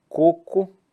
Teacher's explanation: coco onde é que tá a sílaba tônica na penúltima é um portanto uma paroxítona